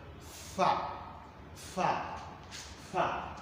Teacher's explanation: mai motsi da mara motsi ba haɗewa suke da juna su rufe mafitar magana ba, a'a kusantar juna suke, yadda iska sai ta yi amfani kamar da ƙarfi wurin fita. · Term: ɗan zuzau